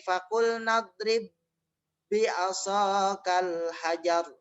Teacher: Ba yang pertama dimasukkan ke dalam ba yang kedua